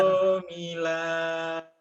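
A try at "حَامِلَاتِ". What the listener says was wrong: Bukan ho, itu nggak ada titiknya, ha. Hamilati, hamilati.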